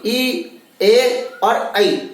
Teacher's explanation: आपकी जीभ देखिए आपके दांतों के पास में टच करेगी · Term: अग्र स्वर